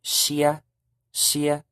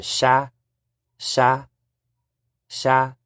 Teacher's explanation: IA or ia, that changes to an A in Green Hmong. So the word in White Hmong, shia, shia, would change to sha, sha, sha.